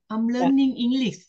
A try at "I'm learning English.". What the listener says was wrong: no, cái câu đó nghe rõ